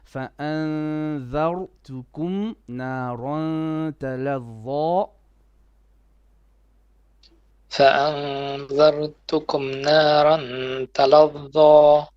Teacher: ra more heavy, but don't bounce it